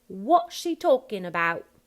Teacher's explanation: basically just a no final T there on what or about